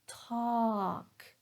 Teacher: when I say talk, I'm stressing it. So notice that the vowel sound was a little bit longer.